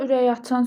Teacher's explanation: ürək açan sözündə k, y kimi tələffüz olunur, çünki özündən sonra sait gəlir